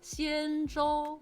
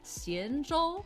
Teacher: importantly, the tones for Xianzhou, they're both first tones.